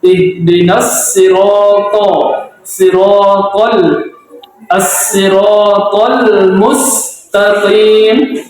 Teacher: Bedakan to dengan ta. Kalau ta tipis, kalau to lebih tebal dari ta.